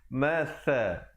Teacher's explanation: sa di hujung lidah